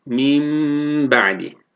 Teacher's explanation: tecvid kaidesi olarak bunu mim ba'di diye gunne yaparak okumamız gerekiyor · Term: İklab